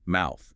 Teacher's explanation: It's just air. No vibration in your throat. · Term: unvoiced